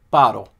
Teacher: falling tone on the first syllable.